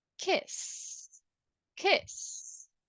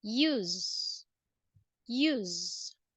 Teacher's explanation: double s doesn't have vibration but the S has vibration